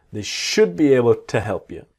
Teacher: And the to becomes t.